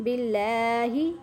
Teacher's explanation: لام کو آپ نے باریک کرنا ہے اور مضبوطی کے ساتھ اس لیے کرنا ہے کہ اس کے اوپر شد ہے